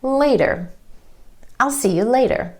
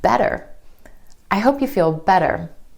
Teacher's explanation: you're going to hear this quick D sound when the T comes between 2 vowel sounds, whether that's within a word or in between 2 words. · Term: flap T